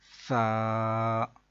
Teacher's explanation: آپ اپنے اوپر والے دانت اور نیچے والے دانت جو ہیں ان کے درمیان اپنی زبان کی نوک کو تھوڑا سا باہر نکال کے پکڑ لیں نرمی سے، اور پھر ادا کریں سا، تو پھر سیٹی کی آواز نہیں نکلے گی۔ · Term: ثا